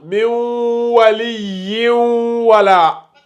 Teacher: lorsque on a le tanwin avec l'une des 4 lettres du idgham aussi, ici, le waw, on fait toujours ce qu'on appelle le nasillement aussi